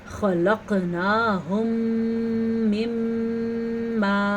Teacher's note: خلقناہم، قاف کے پر قلقلہ ہوگا اور یہاں پہ 2 جگہ پہ غنہ ہو رہا ہے، ایک ادغام شفوی کا غنہ ہو رہا ہے اور ایک میم شد کا غنہ ہو رہا ہے. دونوں غنے ادا کرنے ہیں.